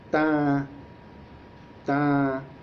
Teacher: al pronunciar la palabra, el aire sale parcialmente tanto de la boca como de la nariz